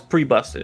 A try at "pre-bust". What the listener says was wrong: Pre-bus. Pre-bus. There's no T. in it.